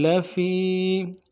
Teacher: فی میں یا مدہ ہے، ایک الف دار میں کھینچیں گے